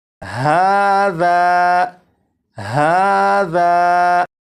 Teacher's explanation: اب یہاں پر دیکھیں، یہ ہے الف، الف سے پہلے زبر ہے، اور آپ کو معلوم ہے الف سے پہلے زبر ہو تو الف مدہ ہوگا، اور الف مدہ کو ایک الف کے برابر کھینچ کے پڑھتے ہیں، اور اس لفظ کو پڑھیں گے ہاذا ہاذا، تو ذال کو ایک الف کے برابر جو کھینچ کر پڑھا گیا ذا، اور اس میں یہ جو آواز ہے ذا آ، یہ الف مدہ ہے اور اپنے مخرج سے الف ادا ہو رہا ہے۔